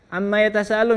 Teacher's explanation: yang harusnya nun tasydid 2 harokat, ya. Ini berlebihan sampai panjang demi kebutuhan nada. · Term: ta'assuf